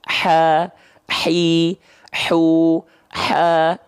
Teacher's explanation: Bisikan dulu atau nafas pedas dulu, baru keluar vokalnya. · mengalir nafas di sini karena dia keluar dari bagian tengah tenggorokan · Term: hams